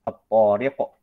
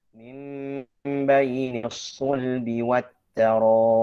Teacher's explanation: Ya, at-tariq dengan to tebal. At-taraib ta dengan tipis.